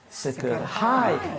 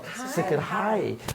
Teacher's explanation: So the accent is on the last syllable.